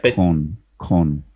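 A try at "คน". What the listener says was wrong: Kon. Kon. Your O. Oh, I want you to pucker up more. O. Oh. As opposed to kon. Oh, oh, oh.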